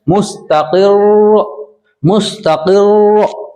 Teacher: रा में 2 बार की आवाज आनी चाहिए, सिर्फ हल्की सी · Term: तशदीद